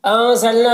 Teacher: نون میں اخفا ہو رہا، نون کی آواز کو ناک میں چھپا کر پڑھیں گے۔ نا میں الف مدہ ہے، ایک الف کے برابر کھینچیں گے۔